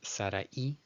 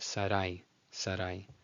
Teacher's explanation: In Spanish, it's SARA-I as two separate syllables, in Hebrew it's just SARAI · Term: diphthong